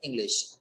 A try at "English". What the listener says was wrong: इंग्लिश नहीं, इंग्लिश। इंग्लिश। देखो सा नहीं, शा बोलना है ना, शा।